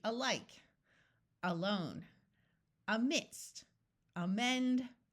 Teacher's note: starting with the letter A it will usually sound like a short u in all of these words the second syllable will be accented · In all of these words, the second syllable will be accented. So we have alike, not a-like, alike. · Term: accent the second syllable